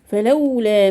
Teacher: فلولا مد طبيعي حركتين.